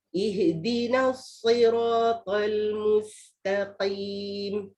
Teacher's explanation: pastikan mustaqim tu dari belakang lidah dalam bunyinya